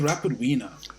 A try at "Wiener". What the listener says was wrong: No, it's Wiener. I think you're pronouncing a W with a V.